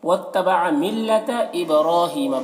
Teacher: با میں یہاں پر قلقلہ کرنا ہے، را کو پر پڑھنا ہے اور کھڑا زبر ہے تو اسے ایک الف کے برابر کھینچیں گے۔